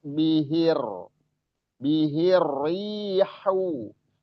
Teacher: haunya hau yang tengah-tengah tenggorokan